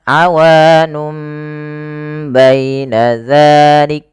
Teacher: Kalau kita masih bingung, ini caranya bukan awanubaina, tapi mim ini menggantikan posisi suara nun yang dimatikan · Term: iklab